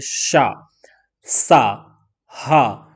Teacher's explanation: जब आप बोलेंगे श तो आपका जो है एक जीभ और मुख में घर्षण हो रहा है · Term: ऊष्म व्यंजन